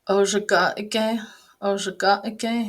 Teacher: it's called a glottal stop, that kind of quick stop in the middle of the word